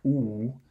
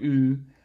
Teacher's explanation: the more you sort of shift this highest arch of your tongue from a pharyngeal position like oo to more of a palatal position like oo, you get a higher F2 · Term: fronted oos